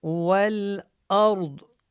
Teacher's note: یہاں پہ ضاد کا وقف ہے تو یہ وقف میں بھی پر ہوگی